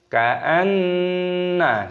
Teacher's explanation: Nunnya ini berharokat tasydid. Perhatikan ketika ada nun tasydid maka hukumnya dibaca gunnah, berdengung, dibaca berdengung